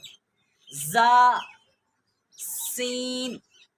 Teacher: سین جو ہے اس کو بھی سیٹی سے ادا کرتے ہیں، دونوں اوپر اور نیچے والے دانت کے درمیان زبان رہ جائے، لگے نہیں